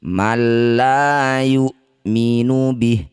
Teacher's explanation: Nun sukun bertemu lam disebut bacaan namanya idgham bilagunnah. Masukkan bunyi nun sukun pada lam tanpa dengung.